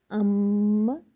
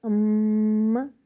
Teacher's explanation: میم کے اوپر تشدید آ رہی ہے، ام، ام کو ہم غنہ کی طرح پڑھیں گے، ام، ناک میں چھپائیں گے آواز کو